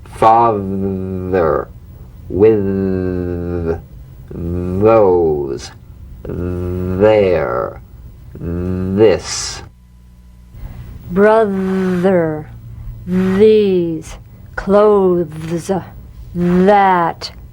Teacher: slip the rim of the tongue between the teeth and sing feeling a buzz or vibration feel that vibration on the tongue outside the teeth you've got · the voiced tongue point to teeth fricative th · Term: voiced th